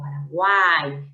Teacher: cerrada u abierta a cerrada I con acento en la a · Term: tritongo